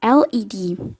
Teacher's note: voiced the l sound is called a leather liquid and is formed by letting the air stream flow around the side of the tongue as the tip of the tongue makes contact with the middle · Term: lateral liquid